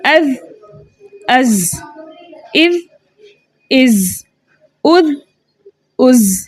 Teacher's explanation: ज़ाल को हम नरमी से बारीक जबकि ज़ा को हम सीटी से बारीक पढ़ते हैं